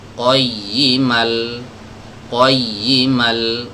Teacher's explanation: Jadi kalau ada tanwin, mau dia fathatain atau kasrotain atau dhammatain, dan setelahnya ada huruf lam yang berharokat, ya, maka muncul satu hukum yang bernama idgham bila gunnah, ya. Nah, idgham bila gunnah ini tidak menyisakan suara tanwinnya sama sekali. Jadi langsung masuk ke tasydid, lam tasydid ini.